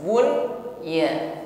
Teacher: nun sukun bertemu ya dalam satu kata maka tidak diidgamkan namun tetap dibaca jelas